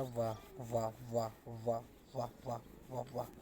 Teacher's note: दंतोष्ठ व्यंजन होता है हमारा